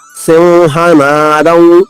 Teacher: సింహ సి తర్వాత అనుస్వరం ఉంది దాన్ని దాన్ని మ అని పలకకూడదు వ అని పలకాలి. రాసుకోండి సి తర్వాత ఉన్న అనుస్వరం పైన వ పొల్లుగా రాసి దాని పక్కన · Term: సానునాసిక వ, సానునాసిక వా